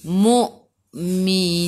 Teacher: Boleh baca 2, 4 atau 6 harakat. Matikan dengan huruf nun. Hujung lidah menyentuh gusi atas.